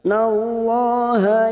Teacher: lam jalalah yang sebelumnya fathah kita baca tafkhim atau tebal